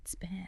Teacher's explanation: There's no puff of air. Physically those are two different sounds.